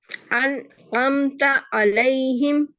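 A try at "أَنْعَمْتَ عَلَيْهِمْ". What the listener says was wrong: हाँ, अनआमता, आइन को आइन के मखरज से पढ़ेंगे, हमजा के मखरज से नहीं, अनआमता अलैहिम,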